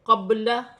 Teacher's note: با ساکن ہے، حروف قلقلہ میں سے ہے، قلقلے کے ساتھ ادا کیا جائے گا